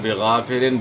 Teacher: غین موٹے حروف سے غین کو آپ نے موٹا ادا کرنا ہے، اور زیر کو معروف ادا کرنا ہے، مجہول ادا نہیں کرنا. اور الف سے پہلے زبر ہے، زبر کو آپ نے کھینچنا ہے، یعنی الف مد ہے تو ایک الف کی مقدار کے برابر آپ نے یہاں مد کرنا ہے.